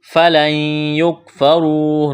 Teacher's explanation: را کو موٹا کرنا ہے، واو مدہ ہے، ایک الف کے برابر کھینچنا ہے